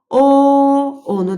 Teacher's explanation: onu deyərkən dilimiz geriyə getdi. Yenə qalın sait hissəsinə yazırıq.